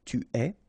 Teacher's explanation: phonetically it's est, alright, quite open